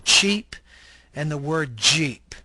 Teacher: are described as a stop followed by a fricative